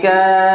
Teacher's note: 6 harokat ya, ka-nya panjangnya 6 harokat